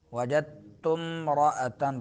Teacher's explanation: تا کو میم کے ساتھ ملائیں گے، الف گر جائے گا درمیان سے